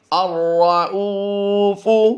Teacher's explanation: اس وقت آپ اپنی اسکرین پر جو لفظ دیکھ رہے ہیں الرؤوف، پھر پڑھ لیجئے الرؤوف، را کو ہم نے پر کرنا ہے اور حمزہ واو پیش او کو ہم لمبا کر کے پڑھیں گے۔ فا کی ادائیگی نارمل ہوگی، لمبا نہیں کریں گے، نرمی سے پڑھ دیں گے۔ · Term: را پر